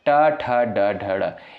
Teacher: इनका उच्चारण किससे होता है? मूर्धा से होता है।